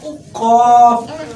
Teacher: زبان کی جڑ کا آخر جو کوے کے پاس ہے